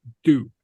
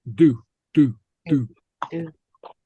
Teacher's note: You pronounce the D up against the front teeth, up against the top front teeth. Do. Not do as in English with the tongue at the top of the palate, but against the teeth.